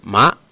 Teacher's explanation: My voice goes up with it, ma, and the second tone is going to be represented with that little accent mark right there.